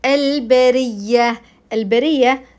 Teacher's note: الراء مكسوره فابين ترقيقها